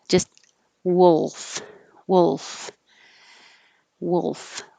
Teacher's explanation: You should hear a little bit of L, but not perfectly wolf.